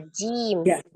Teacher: Secara makhraj tempat keluarnya huruf Jim adalah tengah lidah bertemu dengan langit-langit atas